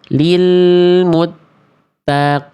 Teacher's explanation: qaf itu adalah huruf yang tebal, tapi ketika berharokat kasroh, kadar tebalnya melemah ya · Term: tafkhim nisbi